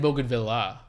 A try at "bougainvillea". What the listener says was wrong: If it's French, you can't pronounce it Bogan. It's not Bougainville.